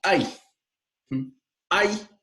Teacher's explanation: fíjense como la segunda vocal y está subordinada a la primera vocal y ahí se pronuncia como un solo golpe no se no se pronuncia como 2 i entonces es una · es una sola sílaba con dos vocales una más intensa que la otra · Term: diptongos